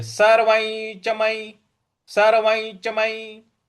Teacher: सर्व के ऊपर जो अनुस्वार है उसका उसके आगे च है तो च छ ज झ ञ जो ञ होता है उसका उच्चारण यहां पर ले आना है तो सर्ववईच इस प्रकार से बोलेंगे सरवई चमई सरवई चमई इस प्रकार से बोलना है और सर्ववई चमई म पर म य पर छोटी इ की मात्रा तो यह सीधा ही है।